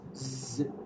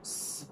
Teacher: there is vibration in the vocal folds when producing z, not s. But with s, there is no vibration.